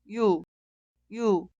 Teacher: Ya que la consonante inicial ing es muda, esta sílaba suena igual que la vocal 유, 유. Vocal 유 se clasifica como vocal simple, pero fonéticamente es un vocal doble. El sonido inicial es i e instantáneamente termina con u.